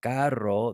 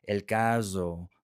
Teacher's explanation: it's like an English Z where you are vibrating your vocal cords and it is coming out and it's vibrating your tongue with a Z sound just like an English Z.